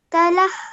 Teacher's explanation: you join the lam to the ha because of the shadda and then you pronounce the sound of the vertical fatha